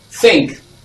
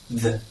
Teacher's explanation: In pronouncing these two sounds, the only difference is one is voiceless and the other is voiced. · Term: voiceless TH